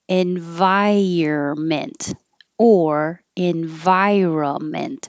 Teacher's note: we don't say the n uh we skip that